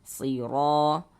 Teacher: Sehingganya ro dibaca panjang. Madu tabi'i panjang 2 harokat.